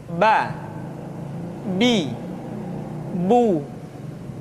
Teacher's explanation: Huruf Ba dikeluarkan dengan cara merapatkan kedua bibir kita